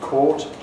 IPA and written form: kɑt (caught)